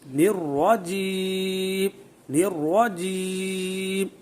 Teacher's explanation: را کو پڑھتے وقت اس کو اب پر کرنا ہے، موٹا پڑھنا ہے، منہ میں آواز بھر جائے